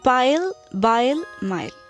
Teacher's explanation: the upper lip and the lower lip touch each other and produces the consonants · bilabial in which the two lips are the articulators for example the initial sounds of the words pile bile mild